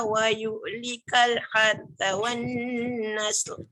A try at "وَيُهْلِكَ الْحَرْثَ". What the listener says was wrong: Ra tebalkan. Wa yuhlikal har.